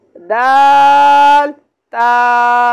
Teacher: इसका मखरज है जबान की नोक और ऊपर के दांतों की जड़ से अदा होता है। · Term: हुरूफ़े नितइया